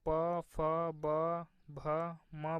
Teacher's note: प वर्ग की अगर बात करें तो ये होठों को स्पर्श करने वाले हैं